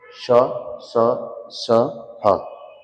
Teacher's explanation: इसके अलावा श श श ह, ये उष्म या संघर्षी है। उष्म संघर्षी जिनकी बोलने में रगड़ खाए जीभ और उससे उष्मा पैदा हो, तब उच्चारण हो उनका